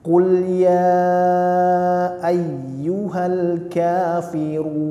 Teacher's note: akhirnya disenyumkan karena dia nunnya huruf tipis